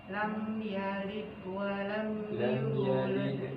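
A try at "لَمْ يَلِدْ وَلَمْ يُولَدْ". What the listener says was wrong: Ada kol-kolannya walaupun tipis.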